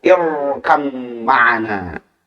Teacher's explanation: Tapi kalau dibaca dari irkam ma'ana, dari irkam, maka dibaca tebal ro-nya.